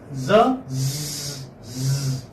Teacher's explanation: Za is voiced alveolar fricative. Alveolar, remember I told you that alveolar is just above your teeth.